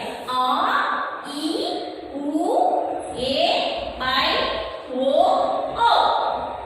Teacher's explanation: ಅದು ಎರಡು ಮಾತ್ರ ಕಾಲದಲ್ಲಿ ಉಚ್ಚರಿಸಲ್ಪಡುವಂತ ಅಕ್ಷರಗಳು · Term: ದೀರ್ಘ ಸ್ವರ